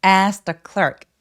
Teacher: 첫 번째 단어의 맨 끝에 t를 삭제해 버리고 발음을 안 하는 경우가 많아요.